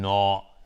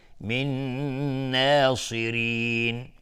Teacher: من ناصرین، نه دقت کنید اینجا الف ترقیق هست، یعنی غلیظ تر نمیگیم نا، نه. من ناصرین، چون نون از حروف ترقیق و از حروف استفال هست، یعنی نازک تلفظ میشه، پس الف هم تابع نون میشه.